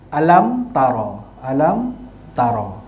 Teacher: Mim mati ada tanda mati, dipanggil izhar syafawi, bacaan dia tidak dengung. Ya. Mim yang bertanda sukun bertemu dengan semua huruf hijaiyah selain daripada huruf ba dan huruf mim.